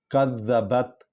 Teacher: ذال کو ہلکا پڑھیں گے، نرم انداز میں پڑھیں گے تاکہ زے نہ بن جائے، اور ویسے وہ مشدد حرف ہے، اس کو کاف کے ساتھ ملا کر پڑھیں گے۔